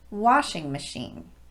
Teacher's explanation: the first word is stressed as it normally would be and both syllables of the second word are de-emphasized · The stress goes on the first syllable of washing, and both syllables of machine are de-emphasized. So it's washing machine, not washing machine.